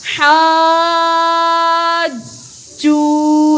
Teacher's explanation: جیم پر تشدید ہے اس لیے اس کو سختی کے ساتھ پڑھیں گے